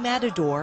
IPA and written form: ˋmætədor (Matador)